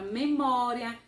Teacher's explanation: Você percebe que a sílaba mais forte é a penúltima e ela é, então, terminada com um ditongo. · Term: paroxítonas